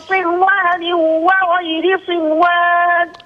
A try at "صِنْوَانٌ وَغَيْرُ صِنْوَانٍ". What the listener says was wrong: أظهر النون صنوان وغير صنوان